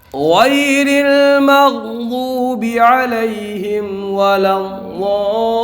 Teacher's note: غائن میں یالین ہوگا، موٹا پڑھیں گے، اس کو پر پڑھیں گے